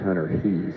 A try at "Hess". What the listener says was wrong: No, it's Hess. spelled Hees, but it's pronounced Hess.